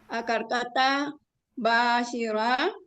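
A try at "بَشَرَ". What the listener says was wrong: Akar katanya jangan dipanjangin, Bu nih. Akar katanya tadi dipanjangin.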